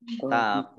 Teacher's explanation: Tetapi karena bertemu dengan huruf terakhir yang dibaca sukun karena waqaf, maka menjadi mat arid sukun. Dibaca panjang, boleh 6 harokat, boleh 4 harokat, juga boleh 2 harokat.